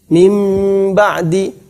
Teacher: kalau kita membaca mim ba'di, kata beliau adalah seakan-akan mimnya bertasydid, padahal mimnya tidak bertasydid. Seakan-akan mimnya bertasydid.